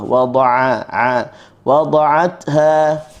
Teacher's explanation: selepasnya huruf ain kita ambil di halqum tengah.